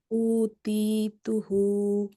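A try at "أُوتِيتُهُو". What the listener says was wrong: উতে টান হবে। উতিতুহু।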